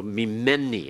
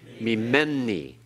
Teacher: To say min, minni is more easily said if you then assimilate these. So this first nun is then assimilated into the following mem, indicated by the doubling dogish. The second noon is assimilated into the following noon, represented by the dogish, and therefore this can be removed and this can be removed, and the resulting form then is me, men, ni.